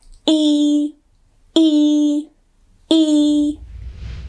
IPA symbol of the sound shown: iː